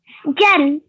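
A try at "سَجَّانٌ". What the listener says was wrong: Okay, remember that 2-second nasal sound at the end. And remember, how would you pronounce a th?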